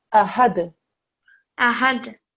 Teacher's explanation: The tip of your tongue, when you make the d sound here, goes and touches the top of your mouth. D. Okay. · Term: kalkala